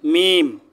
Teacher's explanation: দুই ঠোঁট থেকে এই চারটা হরফ উচ্চারণ হবে প্রথমে হলো মিম দুই ঠোঁটের শুকনা জায়গা থেকে উচ্চারণ হবে · 2 ঠোঁটের শুকনা জায়গা থেকে উচ্চারণ হবে